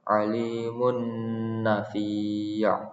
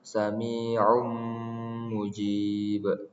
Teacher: Cara membacanya yaitu tanwin dibaca dengung lalu masuk ke huruf setelahnya.